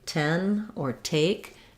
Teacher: the T at the start of words like ten or take has a little release of air, a puff of air that comes out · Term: true T